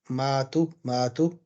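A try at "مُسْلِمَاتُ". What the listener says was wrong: Again, the stretching sound. Stretching sound.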